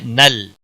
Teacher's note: نل، نا نہیں پڑھنا ہے، نل، لام کو ہلانا نہیں